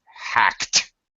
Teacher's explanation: the past tense the Ed makes a t sound hacked okay hacked yes uh all right because the if the